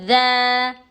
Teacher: زبان کی نوک کو نیچے کے دو دانتوں کی جڑ میں لگانے سے ذا ادا ہوتا ہے